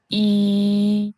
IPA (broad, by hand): i: